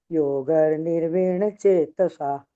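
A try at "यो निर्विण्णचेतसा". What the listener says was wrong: योग नहीं है, योगो निर्विण्ण चेतसा है।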